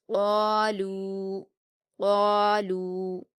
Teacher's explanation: قاف پر الف مدہ ہے، اس کو ہم 2 حرکات کھینچ کر پر پڑھیں گے۔ لام پر واو مدہ ہے، اس کو ہم 2 حرکات کھینچ کر باریک پڑھیں گے۔